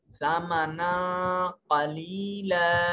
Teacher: نون کو واضح کر کے نہیں پڑھیں گے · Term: اخفا